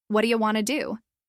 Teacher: They're not pausing between each word. The rhythm is smooth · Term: one chunk